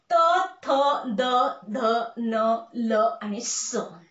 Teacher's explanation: या प्रत्येक वर्णाचा उच्चार करताना आपल्या जिभेचं टोक हे वरच्या दाताला स्पर्श करतं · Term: दंत्यवर्ण